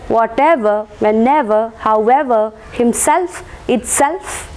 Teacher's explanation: certain words like footprint, bookshelf, kingfisher, and what else, football or blacksmith, stress will be given to the first syllable. Words that ends in ever and shelf, stress will be marked on that particular syllable